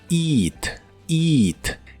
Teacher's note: se pronuncia con la i larga